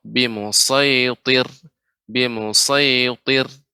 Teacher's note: Sedikit saja dikoreksinya untuk pada kata musaytir ya, so tetap dijaga untuk tidak monyong, kemudian juga ra tetap dibaca tipis walaupun sebelumnya ada huruf ta, yang mana huruf ta adalah huruf isti'la, jadi memang harus dijaga dengan cara sedikit rahangnya dikebawahkan ketika membaca ra sebelumnya ta